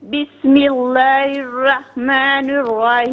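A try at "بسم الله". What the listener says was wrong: یہاں پر بھی بسم اللہ کو صحیح پڑھیں، لام کو باریک پڑھیں. بسم اللہ. ملہ نہیں، اس کو صحیح پڑھیں. بسم اللہ. نہیں، ملہ کیوں پڑھ رہی ہیں آپ؟ ملہ.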